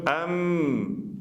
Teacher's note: Prej shkronjave të cilat janë hundore, pra janë nuni dhe mimi. Edhe mimi nëse i mshelim për me e artikuluar shkronjën e mimit, duhet me i mbyllur buzët edhe të delë nga zgavra hundure.